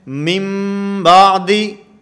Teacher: یہاں اقلاب کا معنی کہ نون کو میم سے بدل کر پڑھیں گے